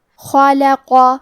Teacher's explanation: لام حروف ترقیق میں سے ہے تو ہمیں لام کو پتلی آواز میں پڑھنا ہے.